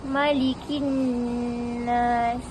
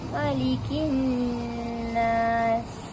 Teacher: Dekat alif lam, lepas tu bertemu dengan huruf syamsiah juga nun, perlu didengungkan dan ditahan dan dibaca 2 harakat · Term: alif lam syamsiah